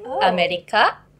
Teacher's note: I think all the R just goes like L.